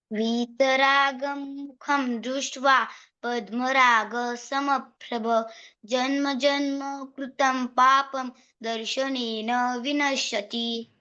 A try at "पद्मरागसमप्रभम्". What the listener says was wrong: मकार भूल गए थे पहले। उत्तम।